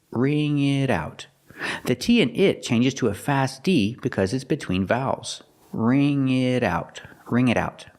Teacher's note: The T in it changes to a fast D because it's between vowels.